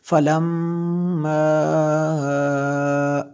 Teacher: یہ دیکھیں میم مشدد ہے تو اس لیے یہاں پہ غنہ ہوا